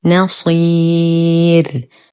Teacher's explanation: نفخم الصوت بأقل درجات التفخيم لأنها مكسورة. نقف على الراء المرققة بمد عارض للسكون بمقدار 2 4 6 حركات لأنها سبقت بحرف مد ووقفنا عليها بالإسكان.